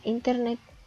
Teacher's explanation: palabra internet y también está dividida en tres sílabas e igualmente la sílaba tónica recae en la última sílaba